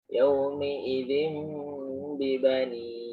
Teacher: binnya nggak jelas karena dirubah menjadi mim atasnya itu, dan mimnya tidak sempurna juga ya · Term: iklab